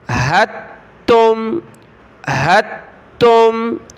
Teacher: ہا کو ہم نے تا کے ساتھ ملانا ہے، تا کو میم کے ساتھ، دال کو نہیں پڑھنا